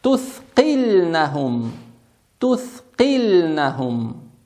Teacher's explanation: Х она мягкая и на выдохе произносится